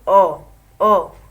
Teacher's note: आधा हमारा मुख खुला हुआ है